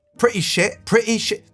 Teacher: There's like a glottal stop all of a sudden.